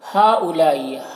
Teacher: ہا میں جو مد ہے اور لا میں جو مد ہے یہ دونوں مد متصل ہے، اسے 3 4 الف کے برابر کھینچ کر پڑھیں گے۔ یہاں پر حمزہ واو کی شکل میں ہے۔